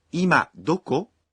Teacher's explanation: This is a shortened and casual way of asking, where are you now? 今どこにいますか？ Say it with a rising intonation.